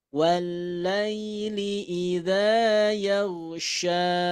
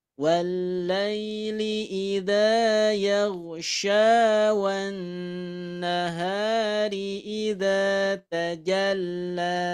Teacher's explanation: Ketika dibaca waqaf maka panjang, ketika diwasol ini juga dibaca panjang karena ada fathah bertemu alif bengkok. Contoh ketika waqaf, wallaili idza yaghsha, wallaili idza yaghsha.